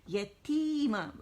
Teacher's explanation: یتیمہ، اور تی کیا ہے؟ مد طبیعی ہے، 2 کاؤنٹ سے کھینچیں گے، نیچے کی طرف آواز جائے گی